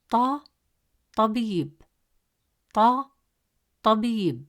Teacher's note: It is a deep sound, pronounced from deeper in the mouth, with more pressure and emphasis on the tongue, pushed with more force from the back of the mouth.